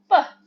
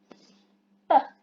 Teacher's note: P, there is no vibration. P, it's voiceless.